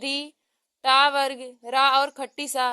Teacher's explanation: ऋतु रसा नाम मूर्धा, री, टा वर्ग, रा और खट्टी सा यह सब मूर्धा से बोले जाते हैं